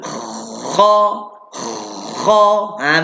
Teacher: Bunyi berdengkor dulu, lepas tu buka mulut.